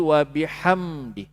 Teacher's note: Mim ni dia ada sifat namanya tawassut. Dia tawassut ni dia sedikit mengalir.